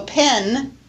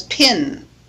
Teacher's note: in the Southern United States E before nasals is pronounced I so pen is pronounced as pin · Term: pin pen distinction